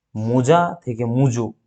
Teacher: দেখো মো পরিবর্তন হয়ে মু হয়ে গেছে, যা পরিবর্তন হয়ে জো হয়ে গেছে, ঠিক আছে, এখানে দুটোরই পরিবর্তন হয়েছে। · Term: অনন্য